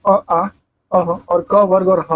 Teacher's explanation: कंठ में आता है अ, आ, अः और क वर्ग और ह आता है